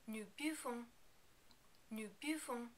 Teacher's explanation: in the new form, we don't totally pronounce the last n because there isn't a vowel after it